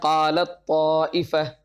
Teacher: یہاں پر ادغام متجانسین بھی ہے کہ تا اور طا کا مخرج ایک ہے، اس وجہ سے اس کو ادغام متجانسین کہتے ہیں۔